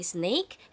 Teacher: the air flow is partially obstructed at the front of the mouth creating a hissing sound cat features the letter c which in this case represents the